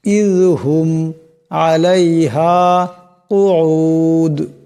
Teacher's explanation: এই মিম সাকিনকে গুণা করা যাবে না